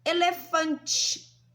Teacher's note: quando a gente fala a palavrinha sorvete, sai o som do I no final